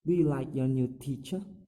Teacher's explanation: The pitch of the voice from this rising intonation is rising at the end of the sentence.